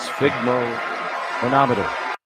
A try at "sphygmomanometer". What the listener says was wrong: Little pregnant pause in the middle. Not bad though.